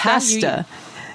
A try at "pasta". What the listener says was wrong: Why are you saying it like it's like with a U?